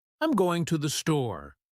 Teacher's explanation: For example, I'm going to the store. We stress store because it's the key word.